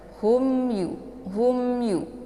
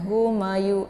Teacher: Ini dibaca jelas ya karena mim sukun bertemu dengan Ya merupakan idzhar syafawi Jadi tidak boleh ditahan ya sehingga membentuk suara yang mendengung cukup